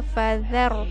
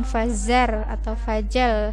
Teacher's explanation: Fadzar pakai di ujung lidah, bukan fazar atau fajar, salah ya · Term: huruf zal